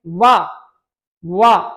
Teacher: बात करते हैं वी की तो वह देखिए संतोष होता है ऊपर के दांत नीचे के होंठ